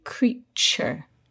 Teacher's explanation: all these words have that same sound where the t becomes a little bit like a ch sound